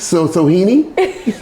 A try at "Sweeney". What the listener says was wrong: No H. Say it like you just said it without Sweeney.